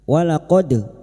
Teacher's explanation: dal sukun yang mati asli di tengah kalimat. Qalqalah sugro. Jangan lupa dipantulkan.